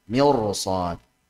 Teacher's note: Karena kalau ketemu isti'la dalam satu kata maka jadi tebal.